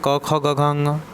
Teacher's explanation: क वर्ग पूरा कंठ से ही है